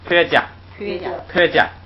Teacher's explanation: 这个要是读双音词，这个客就不能读去声了